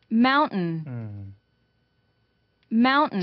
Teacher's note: held t 그래서 뭔가 멈췄다 t가 나온다 이렇게 설명하기도 하는데요